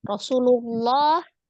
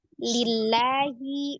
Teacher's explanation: Tetapi laf jalal itu akan kembali seperti hukum asalnya lamnya tipis ketika sebelum lafuz jalalahnya itu ada hurufnya berharakat kasrah